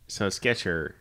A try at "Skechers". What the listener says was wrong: It's no T. Skechers. That's how you pronounce it. There's no T.